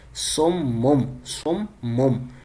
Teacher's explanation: ہم یہاں با کی موجودگی کی بنا پہ تنوین کو میم سے بدل رہے ہیں، یعنی سم مم 2 دفعہ میم کو پڑھ رہے ہیں، سم بکمن.